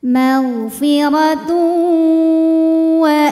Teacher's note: bhunah karena ada tanwin dammah yang menghadapi huruf wau maka tanwin kita masukkan ke wau magfiratu sambil ditahan didengungkan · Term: idgham bhunah